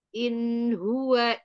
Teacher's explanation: Nun juga itu ada sifat bainiah jadi dia sedikit tertahan sedikit mengalir